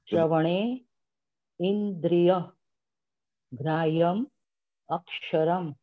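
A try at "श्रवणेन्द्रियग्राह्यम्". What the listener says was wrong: Shravanendriya. It is not Shravana Indriya. Shravanendriya Grahyam Aksharam. Together to read.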